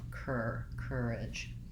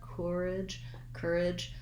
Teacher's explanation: i'm going from a k right into my tight er sound there's no other vowel sound in encourage